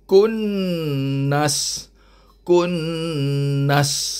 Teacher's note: wajib didengungkan sekadar dua harakat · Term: wajibul gunah